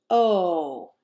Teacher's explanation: our mouth and make our lips round as we say oh my tongue is not low or high but in the middle of my mouth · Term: the o sound